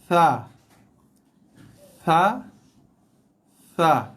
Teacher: kita tarik sikit lidah ke dalam, keluarkan bunyi berserta dengan hembusan nafas yang keluar.